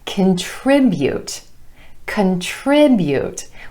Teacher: We've got stress on the 2nd syllable, emphasizing the I vowel sound